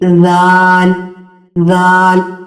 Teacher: आपकी जबान सामने वाले ऊपर वाले दांतों के अंदरूनी किनारे को लगती है